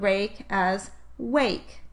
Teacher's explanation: if a child applied the phonological process of gliding to the /r/ phoneme in the word “rake” the child would pronounce the word “rake” as “wake.”